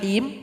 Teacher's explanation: ha yang keluar dari tengah tenggorokan